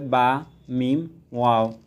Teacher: 2 ঠোঁট হতে পড়তে হয় বা, মিম, ওয়াও। বা উভয় ঠোঁটের ভিজা স্থান থেকে এবং মিম উভয় ঠোঁটের শুকনো স্থান থেকে উচ্চারিত হয়।